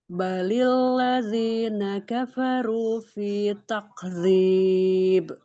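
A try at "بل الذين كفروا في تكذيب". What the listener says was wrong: Oke, huruf kaf, huruf lam. Bukan balilladzina, balilladzina, enggak. Balilladzina. Balilladzina. Karena antum lidahnya dinaikkan saat lam, jangan dinaikkan.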